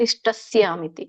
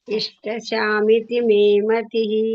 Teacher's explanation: ಅಲ್ಲಿ ಇಷ್ಟಃ ಅಂತ ಹೇಳ್ಬೇಡಿ, ಮಧ್ಯದಲ್ಲಿ ಬಂದಾಗ ಇಷ್ಟಸ್ಯಾಮಿತಿ. ಇಷ್ಟಸ್ಯಾಮಿತಿ ಹ ಸ್ವಲ್ಪ ಮಾತ್ರ ಕೇಳಿಸ್ಬೇಕಲ್ಲಿ, ಎಂಡಿಗೆ ಮಾತ್ರ ವಿಸರ್ಗ ಉಚ್ಚಾರಣೆ ಮಾಡ್ಬೇಕು